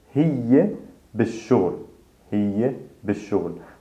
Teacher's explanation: we skip the L sound, we double down on that first letter